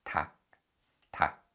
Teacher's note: rather than reading the first 받침, we read the second 받침, and the first 받침, the 리을, remains silent. So we read it as 닭, 닭.